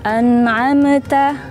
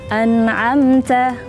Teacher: Jadi mimnya itu tidak dipantul.